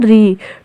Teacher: ऋ वर्ण का उच्चारण स्थान मूर्धा है